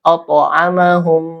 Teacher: Nah, to di sini qalqalah ya, qalqalah sugro. Nah, karena to ini huruf qalqalah dan dia sukun, maka dibaca memantul qalqalah ya.